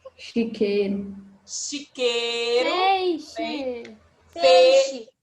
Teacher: apresentam um grupo de vogais E e I, mas que na fala apenas a vogal E é pronunciada